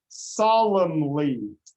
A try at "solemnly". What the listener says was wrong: Okay, now let's try to not emphasize it so much. Solemnly.